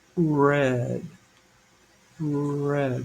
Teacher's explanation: as I say the word, my tongue goes back a little more. Red, and then flips forward to get the D.